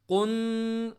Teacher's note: قاف کو موٹا پڑھ کے نون کے اوپر لگانا ہے زور سے